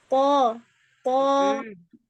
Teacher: To-nya kuatin lagi, jangan kasih dia nafas.